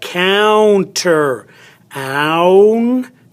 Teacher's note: this is a diphthong also two vowels in one syllable they have an ow sound ow oi but they are counted as one speech sound counter